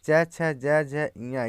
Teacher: च वर्ग में च छ ज झ ञ ये तालु का स्पर्श करते हैं